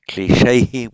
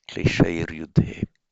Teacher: The sandhi here, instrumental plural on its own without sandhi, kleshehi with the visarga, but here we have the ai with visarga followed by a voiced consonant. Therefore, the ai becomes air, klesheir yudhe.